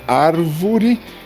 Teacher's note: o substantivo árvore, ele é acentuado na antepenúltima sílaba.